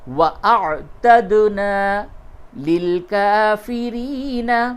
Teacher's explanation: دال میں قلقلہ ہوگا، دال ساکن ہے قلقلہ کیجئے